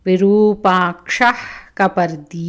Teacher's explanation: అది జిహ్వామూలియ విసర్గ గొంతులోనుంచి వస్తుంది